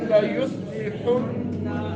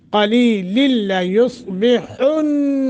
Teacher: हा और नून मुशद्दत है, गुन्ना करेंगे।